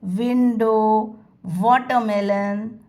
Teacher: W letter words the sound that comes out is V sound the lips go forward and tongue goes backward